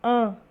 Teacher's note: o A vai ser nasalizado por essa consoante nasal